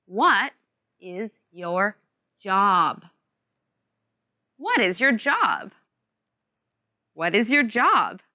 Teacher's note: remember that final sound job job job what is your job remember this question has a falling tone and the words what and job are emphasized